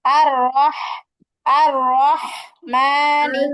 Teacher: الرحمن الرحمن الرحمن الرحمن এই খাটা যখন বলবেন, الرحمن হ্যাঁ, একটা ফ্যাস ফিসি আওয়াজ হবে, একটা হালকা বাতাস বের হবে কণ্ঠের মাঝখান থেকে।